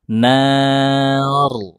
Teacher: huruf ra sukun sebelumnya fathah ditebalkan. Nar.